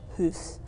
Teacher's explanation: If you listen to me say it, you can hear it's kind of low pitch